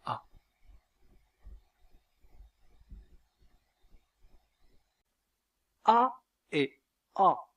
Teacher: La voyelle a est la voyelle la plus ouverte de la langue française. C'est une voyelle antérieure, c'est-à-dire que la langue est en avant. C'est une voyelle étirée. Les lèvres sont étirées et c'est une voyelle orale. Vous voyez ici que le dos de la langue est abaissé pour laisser largement le passage à l'air pour prononcer la voyelle a et a.